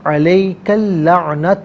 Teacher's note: علیکا اللعنت، علیکا میں کاف پر زبر ہے، اسے اللعنت کے لام کے ساتھ ملائیں گے، درمیان میں سے الف یعنی حمزہ کو حذف کیا جائے گا